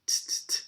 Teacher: It might not sound exactly like t, t. It's probably going to be more like a TS, t, t, t, like a New York T.